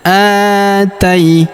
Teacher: Huruf a kita panjangkan dua harakat karena terdapat alif di depannya. Atai. Huruf ta kita ayun sekali karena terdapat ya sukun di depannya.